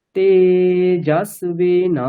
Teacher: জকারে একবার নিচে স্বর করলাম, নাতে একবার নিচে স্বর করলাম